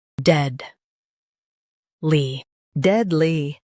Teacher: Focus on dead and keep ly light.